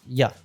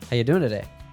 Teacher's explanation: the pronoun you is reduced to a quick ya